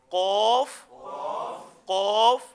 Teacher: تو ہم کوشش کیا کریں کہ قوف کو قوف کی ادائیگی پر ہی رکھنا ہے اور کاف کو کاف کی ادائیگی پر ہی رکھنا ہے۔ قوف، تھوڑا سا منہ کو گول کر کے اور موٹا قوف ادا ہو جائے گا